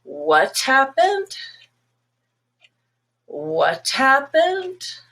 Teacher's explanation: So you want to hear again what they said, and you go and start really, really low. · if it rises, and it's actually a very steep rise, it's a request for clarification, or it might even be like, I can't believe it kind of emotion, or a big surprise.